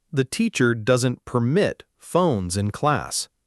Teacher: verb, second syllable stressed